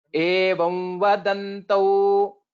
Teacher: So after this evam vadantau, it will become. So this anuswara will change into anunasika vakara.